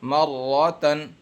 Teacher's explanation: را مشدد ہے، تشدید والی را ہے، اور را مشدد کے اوپر زبر ہے، اس لیے را کیا ہوگی؟ پر ہوگی